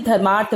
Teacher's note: धर्म का अ प्लस अर्थ का अ दोनों मिलकर आ